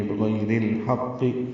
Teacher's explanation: بغیر الحق، ہا وسط حلق سے ادا کریں گے اور قاف سے ملائیں گے، قاف پر پڑھیں گے اور زیر معروف طریقے سے ادا ہوگی